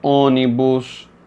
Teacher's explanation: ele indica que a vogal tônica possui um timbre fechado